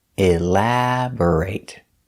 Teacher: the stress is on the second syllable elaborate b r is pronounced bur not bore elabore but bur